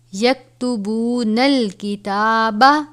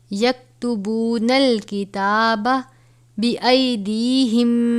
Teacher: یہ کاف باریک والا ہے، اس پہ جھٹکا بھی نہیں کھانا